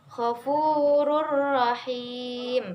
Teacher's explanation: Di situ ada tanwin bertemu dengan huruf ro, maka dibaca tanpa berdengung. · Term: Idgham bilaghunah, idgham bila gunnah